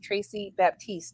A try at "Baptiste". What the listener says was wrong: Baptiste. The P is silent.